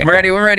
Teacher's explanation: You hear the enthusiasm, the stress on ready.